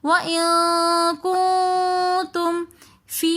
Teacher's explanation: یا مدہ آ رہی ہے تو اس لیے ہم فی تھوڑا سا کھینچ کر پڑھ رہے ہیں